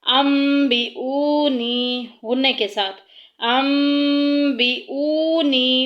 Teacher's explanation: جو نون ساکن کی آواز ہے، اس ساؤنڈ کو ہم نے ختم کر کے میم سے بدل دینا ہے